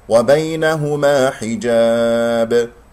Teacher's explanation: وقفت على باء ساكنة في آخر الكلام، مقلقلة قلقلة كبرى. كسرة الحاء، حي حجاب وليس حجا حجا، هذا صوت ألف غير صحيح.